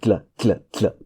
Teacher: you try to put your tongue in a position to say L, and then you sort of use the tip of your tongue, tap it against the alveolar region to create a tla.